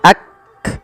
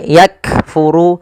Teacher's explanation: Cara membacanya yaitu bacaan syiddahnya dulu, yaitu kaf itu ditahan suaranya ak, baru dikasih hamas. Hamas itu mengalirnya nafas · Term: syiddah dan sifat hamas